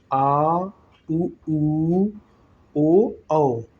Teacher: ये जिह्वा के पश्च भाग से निकलता हुआ प्रतीत हो रहा है, इसलिए इसे पश्च स्वर कहा गया